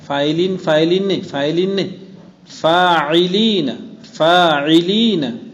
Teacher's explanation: مدہ اور عین. فاعلین، تو فا الف مدہ کو پورا ادا کریں اور پھر اس کے بعد عین